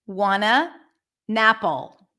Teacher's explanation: when the T appears after an n and it's unstressed like in this case then the t is often reduced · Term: drop the T